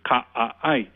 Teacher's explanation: the word for alligator is ka-ai, with the glottal stop separating the different vowels